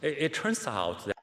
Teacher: all right he can link this a lot better listen he he doesn't connect turns out he he pronounces turns and then out